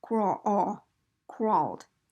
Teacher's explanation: it's an ah sound with rounded lips basically